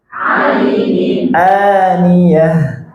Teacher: ain dulu baru hamzah jangan dua-duanya hamzah